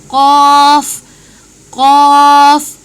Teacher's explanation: Ito ay ko. Ko, nasa lalamunan din po, sa baba ng lalamunan.